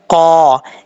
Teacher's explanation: वा इज़ क़ाला, क़ाफ के ऊपर दो नुक्ते हैं, दो नुक्तों वाला क़ाफ जो है वो पुर पढ़ा जाता है और फुल मौत पढ़ा जाता है। क़ा, इसका मखरज है ज़ुबान की जड़ ऊपर वाले तालु के नरम हिस्से से लगे तो क़ाफ पढ़ा जाता है।